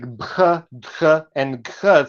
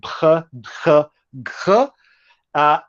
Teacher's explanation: So these are like plosives that are aspirated. So there's a burst of breath that accompanies the closure of plosives or stops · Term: voiced aspirated stops